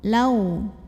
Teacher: Berikutnya di sini ada huruf lin atau harfulin. Karena ada waw sukun yang sebelumnya didahului fathah. Maka cara bacanya lam dilunakan ya, dilembutkan atau dilunakan.